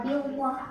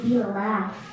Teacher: Jadi lam jalalah tarfiknya. Tarfik itu tipis. Jadi enggak bilwah tapi billah.